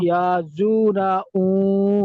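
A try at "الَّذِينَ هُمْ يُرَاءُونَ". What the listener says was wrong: এখানে মধ্যে মুত্তাসিল, এটা দেখা যাচ্ছে আপনার 3 আলিফ টান হবে। ইয়া নয় ইউ, ইউরা। আল্লাযীনা হুম ইউরাউন। ইয়া র নয় ইউর, ইউর।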